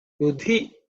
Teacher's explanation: it's a fourth letter in the Ta Varga, so it's aspirated